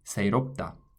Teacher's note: You don't really aspirate that last sound